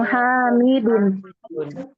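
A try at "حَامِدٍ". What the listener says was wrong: Hamidin Umahat. Lihat di sini harokatnya kasro. Jadi mudhofun ilaih itu harokatnya kasro. Hamidun jadi Hamidin. Qalamu Hamidin yang sahih.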